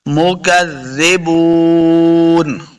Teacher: اس کاف کو موٹا نہیں کرنا، زال کو نرمی کے ساتھ پڑھیں گے ، مکذبون، واو مد ہے، اس کو دو حرکات لمع کرنا